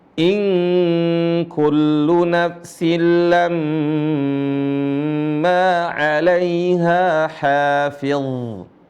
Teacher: Perhatikan huruf dha, dia dialirin suaranya karena dia salah satu dari huruf rokhawah yang telah kita bahas.